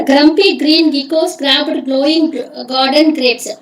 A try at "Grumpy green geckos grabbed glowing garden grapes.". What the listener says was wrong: మళ్ళీ flat voice లో చదవద్దండి, ఒక్కొక్క పదం చదవద్దండి, ఒక సెంటెన్స్ లాగా చదవండి, కొంచెం స్ట్రెస్ వాడి చదవండి.